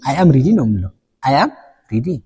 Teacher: ይሄን ቮይሳችን ፋል ይሆናል ወይም ደግሞ ዝቅ ይላል ማለት ነው። ይሄ ቮይስ ጎዝ ዳውን ይባላል። ይሄ ደግሞ የንግግር አንዱ ቁልፍ። ይሄ